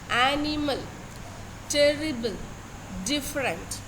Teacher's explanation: one stressed syllable followed by two unstressed syllable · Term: ductile, dactyl